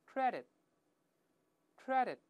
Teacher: 读快之后，最后那个▁t▁又是失去爆破，舌尖顶住